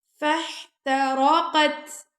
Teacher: تا پہ ہم ہمس کر رہے ہیں